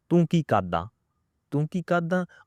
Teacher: But there's many who keep the R sound silent.